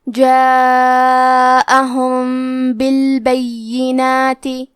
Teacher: اخفاء کا معنی ہے چھپا دینا، تو ہم میم ساکن کو چھپاتے ہوئے اور غنہ کے ساتھ یہ حکم کو ادا کریں گے